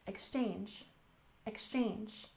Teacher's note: And exchange, we stress the second syllable, exchange, exchange.